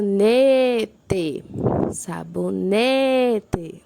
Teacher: sabonete sabonete né é a penúltima por isso é uma paroxítona